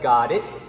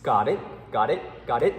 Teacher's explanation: your tongue is placed right behind your teeth and it doesn't leave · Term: the t is not released